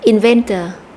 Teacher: danh từ này có ba âm tiết và chúng ta sẽ nhấn mạnh vào âm tiết số hai